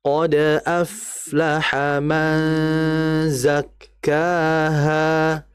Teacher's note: Nun mati ketemu zai, hukumnya adalah ikhfa haqiqi, yaitu dibaca dengan samar nunnya. Jadi ditahan dalam masalah ikhfa ini, nunnya ditahan.